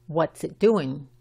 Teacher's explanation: Fíjate que la I es corta y la T de it no se pronuncia.